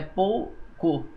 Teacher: o O é mais forte que o U, nós temos um ditongo decrescente, que é aquele formado por vogal mais semivogal, que é a fraca